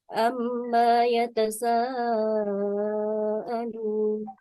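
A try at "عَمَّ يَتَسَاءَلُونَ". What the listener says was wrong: Amma yatasaalun. Mahnya tidak usah panjang.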